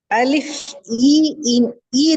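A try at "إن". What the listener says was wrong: நீங்க நாக்க தூக்குறீங்க, நாக்கு நடுப்பகுதி மேல தூக்குறீங்க. இன் இன் இன் அப்படிதானே? நாக்க தூக்காம இன் எப்படி சொல்றேன்?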